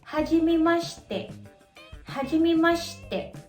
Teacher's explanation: Kung mapapansin nyo, nawala yung letter I. Ang tawag doon ay vowel devoicing.